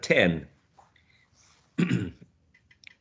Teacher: It's a plosive sound, right? It's an alveolar sound, and it's voiceless. So we can say that t is a voiceless alveolar plosive sound.